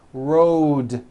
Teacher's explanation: road also has a voiced d ending road it's not wrote on voiced its road the whole word